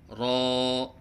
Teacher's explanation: بعض بچے را کی ادائیگی کے وقت را میں تکرار کرتے ہیں، یہ غلط ہے، جیسے را۔ نہ اس میں تکرار ہے اور نہ عدم تکرار، بلکہ مشابہ تکرار ہے۔ مشابہ تکرار کا مطلب ہے جیسے کہ آپ تکرار کر رہے ہیں، جیسے را۔